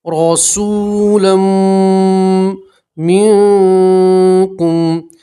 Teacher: تنوین کا میم کے اندر ادغام کریں گے اور گنہ کریں گے